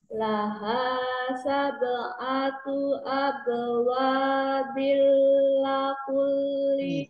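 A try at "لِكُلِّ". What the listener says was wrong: Likulli, bukan lakulli.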